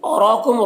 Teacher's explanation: را کو پر پڑھیں گے اور کھڑا زبر ایک الف برابر کھینچیں گے